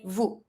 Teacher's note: You don't pronounce the S, you just say vous.